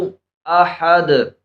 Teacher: آخر میں دال پر کلکلہ کریں گے، دال حروف کلکلہ میں سے ہے